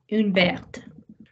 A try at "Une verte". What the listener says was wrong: Gorgeous.